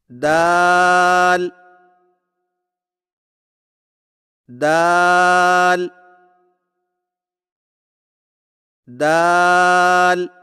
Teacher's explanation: زبان کی نوک کو سامنے والے اوپر کے دو دانتوں کی جڑ سے لگا کر باریک آواز میں پڑھیں، یعنی دال دال دال۔